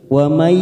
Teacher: nun sukun bertemu ya idgham bi gunnah, kita tekan 3 ketuk